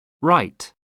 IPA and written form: raɪt (right)